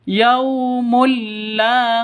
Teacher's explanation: tanwin bertemu dengan lam masuk ke lamnya cara bacanya masuk ke lam tanpa dengung karena idgham bilaaghunnah masuk ke lam tanpa dengung yaumulla beda dengan nun mati bertemu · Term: idgham bila gunnah